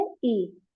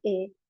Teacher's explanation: اس کی بھی دو آوازیں ہیں، ایک معروف آواز، ایک مجہول آواز. معروف آواز اس کی ہے ای اور مجہول آواز ہے اے